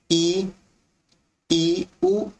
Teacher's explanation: जिन स्वरों के उच्चारण में मुख द्वार लगभग बंद रहता है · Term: संवृत